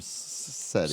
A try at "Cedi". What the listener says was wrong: SETI, no, it's Jetty. Just sound, hard J.